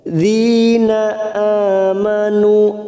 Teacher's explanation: a alif kecil yang berdiri di atas 2 harokat kita panjangkan